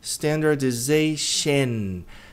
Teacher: Esse O tende a ter som de E. E-átono.